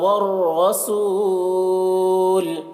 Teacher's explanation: طا کو پر پڑھیں گے، طا بھی حروف مستعلیہ میں سے ہے اور یہاں پر واو اور یہ الف دونوں کو نہیں پڑھا جائے گا، عین کو لام سے ملا کر پڑھیں گے اور لام کو پر پڑھیں گے کیونکہ اللہ کے لام سے پہلے پیش ہے۔ والرسول، را کو پر پڑھیں گے، رائے مشددہ کے اوپر زبر ہے